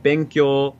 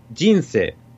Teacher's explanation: if you take like benkyo, that's like flat. But if you take like jinsei, it goes down.